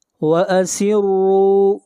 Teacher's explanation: را کو کھینچ کر پڑھیں گے ایک الف کے برابر، یہاں پر واو مدہ ہے۔ واو ساکن سے پہلے اگر پیش آ جائے تو اس کو واو مدہ کہتے ہیں۔